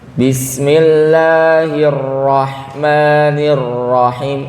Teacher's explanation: hirra itu kan agak ditahan Bapak Ibu ya, temponya agak panjang sedikit ya. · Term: bainiyah